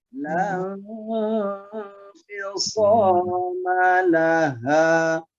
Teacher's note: Hanya ditarik ke pangkal tenggorokan. Ha dengan napas perut.